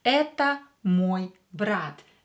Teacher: Here E is stressed, so O will be pronounced as A.